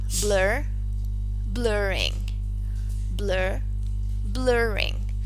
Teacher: When the stem ends in the letter R, then a linking ra has to be added.